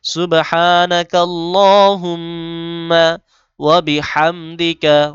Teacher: আলিফ টান এবং মি গুন্না করতে হবে